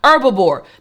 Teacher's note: that H is kind of silent